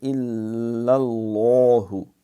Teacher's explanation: یہ لام موٹا ہے، لفظ اللہ کے لام سے پہلے زبر اور پیش ہو تو موٹا ہو جاتا ہے۔